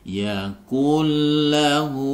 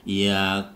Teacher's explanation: Jadi tanpa dengung, langsung dimasukkan nunnya. Yakullahu. Jangan sampai dibaca yakunlahu, nggak boleh. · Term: idgham bila gunnah